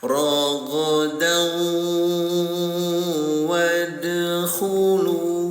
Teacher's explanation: Jadi ro ya ditempelkan ke huruf wau. Jadi bunyi tanwinnya ditempelkan ke huruf wau. Didengungkan selama dua haraka. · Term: idgam bigunah